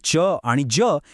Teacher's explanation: च आणि ज हे तालव्य तर आहेतच पण ते अल्पप्राण सुद्धा आहेत कारण त्यांच्या उच्चारात ह चा जोर नसतो